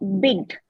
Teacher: Bid, it is short, right? So it will be a laxed vowel.